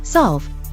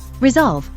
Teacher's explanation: is voiced your glotus is still producing the voed carrier and the voiceless s is pronounced as a voiced Z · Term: coarticulation